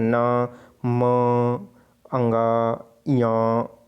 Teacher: तो इसमें कहीं ना कहीं नासिक नाक का प्रयोग हो रहा है, न म अंगा या, ठीक है। इसके उच्चारण में वायु नाक से निकलती हुई है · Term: नासिक व्यंजन